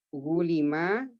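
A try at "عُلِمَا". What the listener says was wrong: Ulima ya, bukan gulima.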